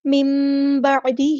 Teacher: نون کی آواز کو ہم میم میں بدل دیں گے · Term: اقلاب